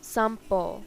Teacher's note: Followed by M, P, and B sounds, N is pronounced as M